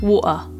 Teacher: in some variations of British English, the glottal stop is used in place of a T. So for example, the word water with a glottal T would sound like water.